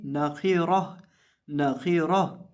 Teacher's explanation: अब यहाँ ये जो हमारे पास खौ है और रौ है, इन दोनों को जब हम पढ़ेंगे तो इनको हम मोटा करके पढ़ेंगे और इसी तरह ये आखिर पे जो गोलता है इस पर वक़्फ़ करते वक्त हम इसको हाय साकिना से बदल देंगे